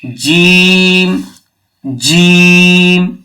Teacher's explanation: জিভের মাঝখান এবং তার বরাবর উপরের তালুর সাথে লাগিয়ে উচ্চারিত হয়